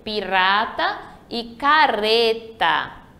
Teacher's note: um R entre vogais, ele vai ter o som fraco